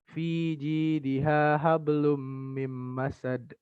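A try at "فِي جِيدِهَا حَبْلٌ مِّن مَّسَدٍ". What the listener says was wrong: Lagi gunahnya hablum mim masad.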